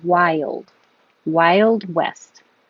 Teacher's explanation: wild is almost two syllables I made it two parts because your tongue goes up very high · your tongue goes up very high, wild, and then slides down for the L.